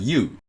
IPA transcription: juː